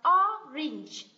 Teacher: Âm này không phải là âm A, mà đây là âm E, ok? Từ này đọc là orange, đây âm E nhá, orange, quả cam.